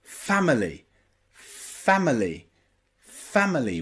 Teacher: fama, family, with that schwa, because the I is not stressed there.